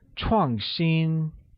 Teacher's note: is pronounced with a falling tone on A and a high level tone on I